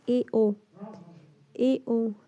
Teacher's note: अर्ध समृद्ध मतलब हाफ क्लोज, तो थोड़ा मुंह खुलता है इसमें, इसका उच्चारण करते समय